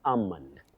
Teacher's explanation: That L is silent, then the O takes the weak sound almond. Then we have Titus Bravo.